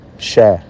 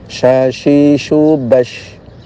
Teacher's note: Shin itu tengah lidah dinaikkan tapi tidak terlalu tinggi.